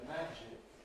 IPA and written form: ˈmæʤɪk (magic)